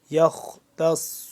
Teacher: خا کو موٹا کر کے پڑھیں گے, صاد کو موٹا پڑھیں گے, اور صاد کے اوپر شد ہے, اس کو دوبارہ سے دوسرا دفعہ, یعنی کہ تا صاد زبر تس, صاد پہ سو, صاد دو دفعہ پڑھا جائے گا, دونوں دفعہ پر پڑھا جائے گا.